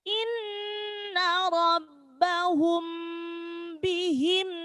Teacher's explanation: ketika ada mim sukun ketemu huruf ba itu pasti dibaca mendengung, namanya ikhfa syafawi.